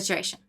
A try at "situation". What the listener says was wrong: The way you say situation is so adorable. It's because you don't pronounce the T. Situation. You say situation. The way you were saying it before, you were not pronouncing the T.